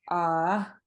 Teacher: Next one, if you're saying yes to somebody, you'll have this long, low ah followed by a short high tone